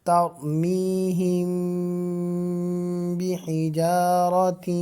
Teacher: میم ساکن کے بعد با آ رہا ہے تو یہاں پر غنہ ہوگا